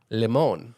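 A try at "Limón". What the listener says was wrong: No, limon, Limon, with an accent on the I. I thought it was limon.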